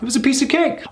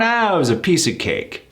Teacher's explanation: So we could go up if we want. It was a piece of cake. Or if we're feeling a bit cocky, we can go down.